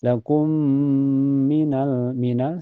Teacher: Cara bacanya mim pertama dimasukkan ke mim yang kedua dengan sempurna. Ini juga bisa disebut idgam kamil ya karena masuknya dengan sempurna. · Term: idgam mimi